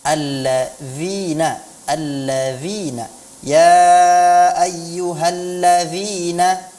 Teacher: jadi ujung lidah kita menyentuh ujung gigi seri atas · huruf dzal itu keluarnya adalah di ujung lidah, di ujung gigi seri, bukan di belakang gigi seri. Kalau dia diucapkan di belakang gigi seri, maka kedengarannya ya ayyuhallazina seperti huruf dal ya. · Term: huruf-huruf Zal